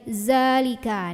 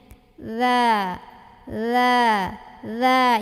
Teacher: Za itu ujung lidah ketemu ujung gigi yang atas. Jadi melet dikit lidahnya. Za, nyentuh dikit aja.